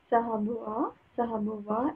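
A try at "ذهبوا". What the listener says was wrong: Zahabu, Alif is silent.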